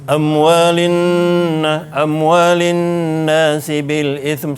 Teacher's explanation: amwalin nas ni kena dengung dengan qadar 2 harakat